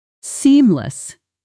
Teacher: Seamless is stressed on the first syllable.